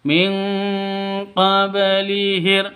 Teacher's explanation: Qad khalat min qablihir rusul, min qablihir, non mati bertemu dengan qaf, cara bacanya samar didengungkan, siap-siap ke huruf qafnya karena non matinya ditambah dengan ng karena bacaan ikhfa hakiki, khusus qaf dan kaf yang ditambah ng.